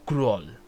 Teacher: Como que la O es una U, Kroll. Y la K es como que va con fuerza, pero se apaga de inmediato y la R gana más, Kroll. Y realmente las dos L se consideran como una Kroll, básicamente.